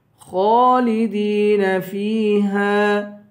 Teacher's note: خا کو پر پڑھیں گے اور ایک الف کے برابر کھینچ کر پڑھیں گے، خالدین، دال کو بھی کھینچ کر پڑھیں گے، فیہا، آخر میں ہاں ہے، ہاں کے بعد الف ہے، الف حروف مدہ میں سے ہے، اسے ایک الف کے برابر کھینچیں گے۔